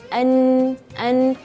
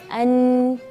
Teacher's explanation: huruf nun ini dia memiliki sifat tawasud itu tengah-tengah jadi tidak terlalu ee pendek dan tidak terlalu panjang